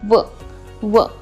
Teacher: वचं उच्चारण स्थान आहे दंतोष्ठ, म्हणजे आपली जिव्हा आपले ओठ पण बंद होतात, आपले ओठही स्पर्श करतात एकमेकांना आणि आपली जिव्हा दातांना स्पर्श करते.